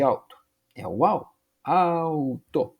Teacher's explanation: no caso do alto a vogal tônica é o azinho né O u é semivocal